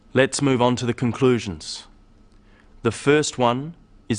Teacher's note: you'll notice small pauses in the middle of sentences after phrases these Help The Listener to follow what is being said now